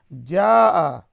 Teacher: جاء یہ مد متصل ہے، اسے 4 یا 5 حرکت کے برابر کھینچ کر پڑھیں گے